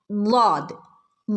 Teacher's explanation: നാവിൻ്റെ അരികുവശം അരികുവശവും അണപ്പല്ലുകളോട് ചേർന്നിട്ടാണ് ലാദ് വരുന്നത്. ഓക്കെ. വായ നിറച്ച് പറയേണ്ട ഒരു ലെറ്ററാണ് ലാദ്.